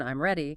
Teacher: if you say it with a rising tone, I'm ready, it becomes a question even though the words are identical.